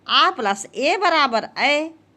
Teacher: आ प्लस ए बराबर ऐ तो इसका उच्चारण स्थान भी कंठ ताल होगा